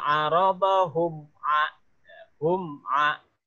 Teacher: mimnya mati jelas di bibir, a-nya jelas di sebutan berikutnya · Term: Syafawi